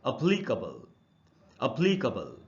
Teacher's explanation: ये वर्ड है दोस्तों APPLICABLE। इसको एप्लीकेबल नहीं पढ़ना चाहिए, ये आधा अ से शुरू होता है